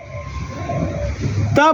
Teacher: त बोलेंगे तो आपकी जबान दांत से स्पर्श करेगी ही करेगी